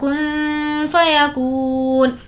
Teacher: नून साकिन के बाद हुर्फ़ इख्फ़ा में से फ़ा है इसलिए नून की आवाज़ को हमें नाक में छुपाना है